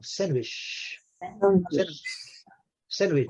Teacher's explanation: Esse D não é pronunciado, não.